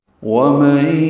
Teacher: واو ہونٹوں کی نا تمام گلائی سے ادا کریں گے، جلدی پڑھیں گے